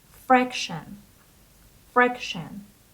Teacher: The stress is on the first syllable, so it is fraction.